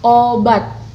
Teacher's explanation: glotis tertutup rapat sewaktu artikulasi primer diucapkan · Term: glotalisasi